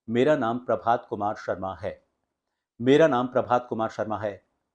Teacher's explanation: जो फिल्म के आर्टिस्ट हैं वह अपनी आवाज में जब लाइन को खत्म करते हैं तो एक लो पिच के साथ खत्म करते हैं